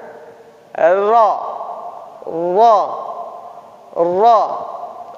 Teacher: Ro ini ujung lidah agak ke dalam sedikit disertai gerakan punggung lidah.